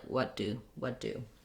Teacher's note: i'm going to go up to make the t i'm not gonna let any air out i'll just drop my tongue back down to make the d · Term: stopped t, stopped T